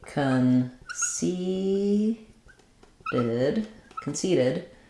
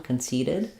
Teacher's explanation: it's not a t or a d it's just a light lift of the tongue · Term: flap sounds